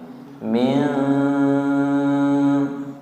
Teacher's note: ujung lidahnya tidak nempel, namanya ikhfa